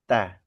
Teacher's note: Kalau huruf ta itu lidahnya agak maju ta huruf T gitu kan ya.